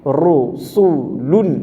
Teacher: সু চিকন হবে এবং ঠোঁট গোল হবে